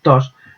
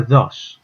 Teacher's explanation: Es el caso, por ejemplo, de la palabra tos. Si esa T, el aprendiz, la pronuncia de forma más relajada, pues en lugar de sonar tos, sonará dos.